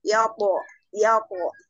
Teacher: huruf kolkolah di tengah bacaan atau huruf kolkolah dengan sukun asli bacaan kolkolah sugro yaitu dipantulkan kecil